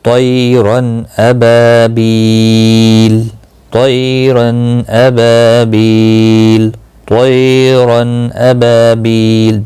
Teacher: تنوین کے بعد حمزہ آیا ہے، اس لیے تنوین کے اوپر گنہ نہیں کرنا ہے، اظہار کرنا ہے۔ طیرن، رن یہ غلط ہے، اگر گنہ کیا تو غلط ہو جائے گا۔